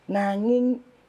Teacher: suara eng terakhir itu suara sengau itu bisa dilanjutkan